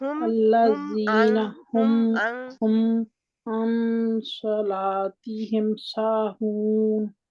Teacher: मीम साकिन का इजहार है, तो मीम साकिन की, मीम जज़म वाली की आवाज बिल्कुल क्लियर